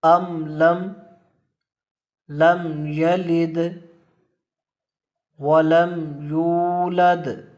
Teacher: میم ساکن کو اس کے اپنے مخرج سے پڑھیں گے اور اس میں غنہ بھی نہیں کریں گے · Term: اظہار شفوی